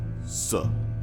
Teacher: To produce these sounds, bring the tip of your tongue close to the alveolar ridge. With that, you produce S.